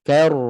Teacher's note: balik Ok nipis jangan jangan k kemudian masuk ro terus tebal k tadi nipis masuk R terus tebal